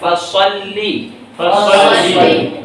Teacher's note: اس میں کچھ کھینچنا نہیں، کسی نے فاصلی کہہ دیا تو یہ غلط ہے، یا کسی نے فصالی کہہ دیا تب بھی غلط ہے، کسی نے لام کو کھینچ کے پڑھ دیا فصلی تب بھی یہ کیا ہوا؟